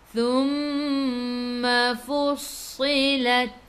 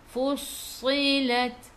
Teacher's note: Sasisu kena baca dengan tebal. Dan ingat huruf sa sifat hurufnya safir.